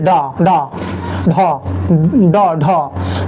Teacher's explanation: उत्क्षिप्त में आते हैं जीभ ऊपर उठाकर झटके के साथ नीचे आए